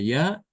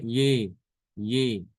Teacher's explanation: imalah itu maksudnya dibaca antara fathah dengan kasroh ya, bukan bukan dibaca ya, tapi juga bukan dibaca yi, tapi bacanya ye, seperti kata meja ya, meja.